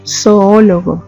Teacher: emiten golpes de voz por separado por lo tanto se deben separar porque están formando un hiato